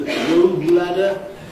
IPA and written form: ˈrəʊb ˋlædə (rope ladder)